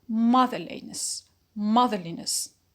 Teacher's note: we keep the stress as it was in the root which is mother